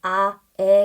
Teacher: 혀은 상대적인 위치가 점점 아래로 내려갈 수밖에 없죠 그래서 아에 같은 경우 턱이 많이 벌어지고 혀가 아래쪽에 위치해 있다